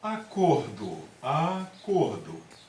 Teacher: Olha só, o cor ele soa com mais força, né? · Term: sílaba tônica